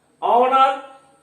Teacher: लिखते हैं HOUR, लेकिन बोलेंगे आवर, H यहां साइलेंट है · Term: H साइलेंट